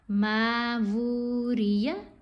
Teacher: اب میم کو لمبا کیا کیونکہ حرف مدہ ہے, اور واو کو لمبا کیا, اس کے اوپر کھڑا پیش ہے.